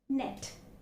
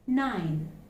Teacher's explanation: which is represented by the alphabet n and it is uh it's an alveolar nasal it's a voiced alveolar nasal it's again a voice consonant